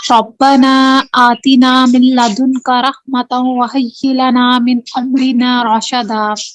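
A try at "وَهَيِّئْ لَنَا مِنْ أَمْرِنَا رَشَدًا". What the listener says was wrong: ٹھیک ہے، جو حی ہے نا اس پہ تھوڑا سا آپ یعنی ٹائم دیں نا، تاکہ نہیں رکنا نہیں ہے، لیکن حمزہ کی الگ سے آواز نہیں ہے نا، جلدی پڑھیں گے تو ہمیں لگے گا حمزہ کی آواز نہیں آئی، ٹھیک ہے؟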